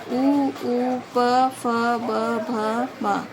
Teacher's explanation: इसमें वायु ओठ से टकराती हुई बाहर निकलती है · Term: ओष्ठीय वर्ण